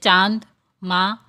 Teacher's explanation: इसे अनुनासिक कहते इसका उच्चारण मुंह और नाक से होता है इसे चंद्र बिंदु भी कहते अनुसार को चंद्र बिंदु भी कहते